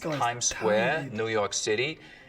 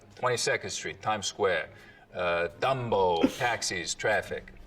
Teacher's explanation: The tongue tip hits the teeth, or close to them, on TD and N sounds instead of, a little further back. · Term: tongue tip on the teeth